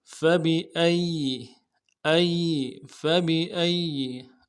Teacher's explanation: یا کے اوپر تشدید ہے، زور دیں گے، اگلے یا کو نرم سے ادا کریں گے